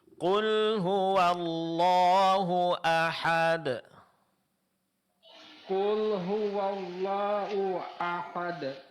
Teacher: Dari hu ke a suara tidak terputus. Jadi langsung qul huwallahu ahad.